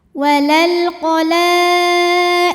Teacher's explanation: Karena alif lam menghadapi huruf qamariah yaitu qof, maka lam sukun dibaca jelas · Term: alif lam qamariah